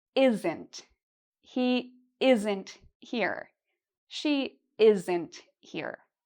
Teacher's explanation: it's two parts, isn't, and one part is louder and longer. The first part is louder and longer.